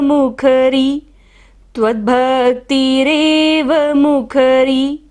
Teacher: र पर क्या है, बड़ी की मात्रा है तो इसे हमें लंबा लेना है।